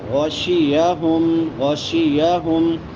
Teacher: गैन मोटा होगा, शीन हरूफ शजरिया में से।